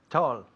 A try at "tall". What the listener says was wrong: Con un sonido de O y no tal. No como ¿qué tal? No, es tall. Tall.